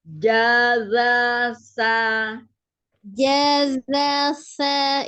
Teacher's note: sa-nya ujung lidahnya ada di ujung gigi seri bagian atas.